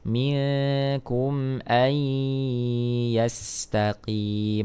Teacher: illa a nun sukun bertemu dengan huruf ya idgham bhunah ya memasukkan meleburkan huruf nun ke dalam huruf ya dengan mendengungkan suaranya